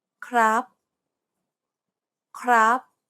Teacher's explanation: The idea is to pronounce it high and keep it high throughout the entire syllable. · It's pronounced high and steady. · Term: high tone